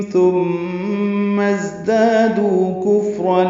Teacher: ثم میم مشدد پہ غنہ ہے اور ازدادو کا حمزہ عارضی ہونے کی وجہ سے میم کو زا سے ملانا ہے